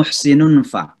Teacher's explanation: Jadi seolah-olah suara nun itu masuk ke huruf fa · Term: ikhfa